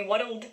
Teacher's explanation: what's happened there with these words like girdle, world, we're adding an extra syllable